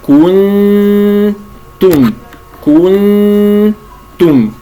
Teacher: بضم الكاف ثم ارجاع الشفتين الى هيئتهم الطبيعيه ثم الضم عند التاء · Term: الاخفاء